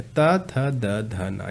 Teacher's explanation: ता का उच्चारण करते समय जीभ किससे, दांत से स्पर्श करती है, किससे, दांत से। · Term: दंत वर्ण